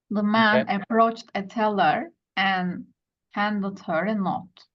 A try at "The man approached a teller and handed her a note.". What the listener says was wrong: Right, exactly.